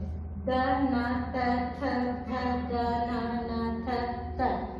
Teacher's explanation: द न त थ थ द न थ त, ये सभी दंत्य उच्चारण स्थान से उच्चारित हो रहे हैं